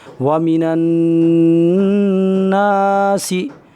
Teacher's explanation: نون پر زبر ہے اور نون میں الف لگا ہوا ہے، الف سے پہلے زبر ہو تو الف کو تھوڑا کھینچ کر پڑھیں گے۔ سین کے نیچے زیر ہے، زیر کو جلدی پڑھیں، ذرا بھی نہ کھینچیں۔ · نون کو نون میں ملا کر پڑھیں، اس لیے غنہ کے ساتھ پڑھیں، اس لیے کہ نون پر تشدید ہے، ناک کے بانسے سے ادا ہوگی، اس کا خاص خیال رکھیں۔